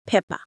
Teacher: both of your lips coming together, which we call bilabial